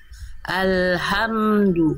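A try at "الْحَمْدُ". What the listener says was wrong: Nah, itu hilang lagi. Mana H-nya? H. Alhamdu.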